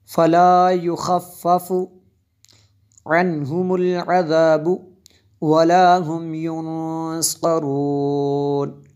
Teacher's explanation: نون ساکن کے بعد صاد حروف اخفا میں سے ہے، اس لیے یہاں پہ ہم نے غنہ کیا، اخفا کیا